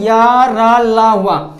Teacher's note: तुम्हारी जिह्वा है वो मुख के किसी भी भाग को पूर्णतः टच नहीं करेगी ना, पूर्णतः टच नहीं करेगी, तो इसलिए हम इसको बोलते हैं अंतस्थ व्यंजन।